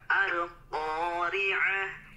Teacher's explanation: huruf qaf yang berharokat fathahnya itu tidak boleh membulatkan bibir, Pak.